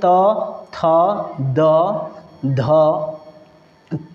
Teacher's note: त वर्ग का उच्चारण स्थान जो होता है वह होता है दंत